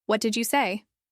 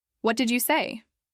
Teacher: What did you say? With a rising intonation sounds like a genuine question. What did you say? With a falling intonation could sound more like a statement or a complaint.